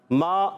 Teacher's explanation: میم الف زبر ما، الف مدہ ایک الف کھینچنا ہے. میم کا مخرج ہے دونوں ہونٹوں کا خشک حصہ, دونوں ہونٹوں کے خشک حصے سے میم ادا ہوتا ہے